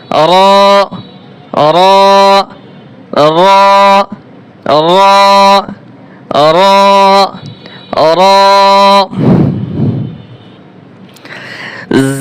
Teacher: র হরফও মোটা হবে, এক আলিফ টান হবে